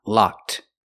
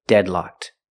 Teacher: the Ed is pronounced with a pure T sound